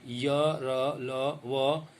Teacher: य, र, ल, व ये अंतस्थ है, किसी को भी नहीं छूती इसमें जीभ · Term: अंतस्थ व्यंजन